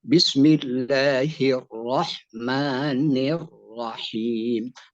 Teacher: karena setiap yang bertasydid umumnya dalam bahasa Arab menunjukkan sering tetapi huruf ro yang sifatnya taqrir maksudnya adalah hanya bergetar sekali bukan berulang-ulang